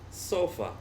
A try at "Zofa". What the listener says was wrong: Zofa. You said with this S sound.